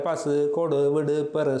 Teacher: தனி குற்றெழுத்தோடு வருகின்ற உகரங்களும் இதழ் குவியாத ஒலிக்கப்படுகின்றன · தனி குற்றெழுத்துடன் வரும் உகரங்களும் இதழ் குவியாது குற்றியல் உகரங்களாகவே உச்சரிக்கப்படுகின்றன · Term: குற்றியல் உகரம்